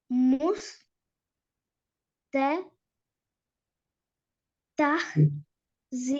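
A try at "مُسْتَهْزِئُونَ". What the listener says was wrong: தஹ் அல்ல, பெரிய ஹே தானே அது. தஹ்.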